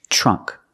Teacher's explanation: We see the TR making the ch sound.